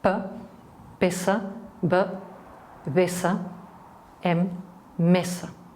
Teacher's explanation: from the front, from the lips, we have the bilabial consonants